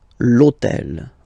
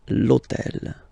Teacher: in French we don't pronounce H, okay? So basically the first sound of the word is the vowel O